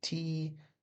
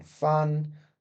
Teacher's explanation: There's no vibration here in our throat to produce these sounds. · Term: Unvoiced consonants